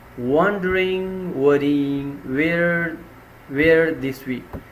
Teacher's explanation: repeating the W sound at the beginning of words and the long E sound within words